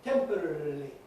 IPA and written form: ˈtempərərəli (temporarily)